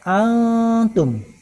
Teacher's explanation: Antum adalah ikhwah, karena nun mati bertemu dengan ta. Ta adalah huruf ikhwah, maka hukum bacaannya adalah ikhwah, didengungkan.